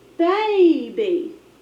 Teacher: Like in this word, baby, that A is open, it's going to be long, and you hear that first syllable louder, longer, and higher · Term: accent